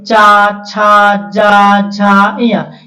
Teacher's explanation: अब देखिए तालू से तालू से चा वर्ग